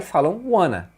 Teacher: quando você junta want com o a, eles emendam na hora de falar e falam wanna